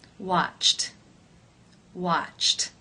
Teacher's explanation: the final sound of the verb in infinitive form is CH that is an unvoiced consonant sound therefore it is case one where the Ed D is pronounced as the T sound